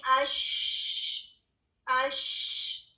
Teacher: ہوا بھی جاری رہ رہی ہے اور آواز بھی جاری رہ رہی ہے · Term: رخاوہ